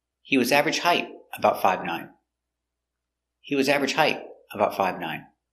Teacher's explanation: At the end of a positive statement, the intonation goes down at the end. So, up before a comma and down at the end.